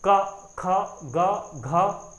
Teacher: सारे वर्ड आपके कंठ से निकल रहे हैं, इसलिए इसका उच्चारण स्थान क्या है आपका कंठ है।